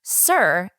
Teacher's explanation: Sir is R controlled because the R changes the way the vowel is pronounced.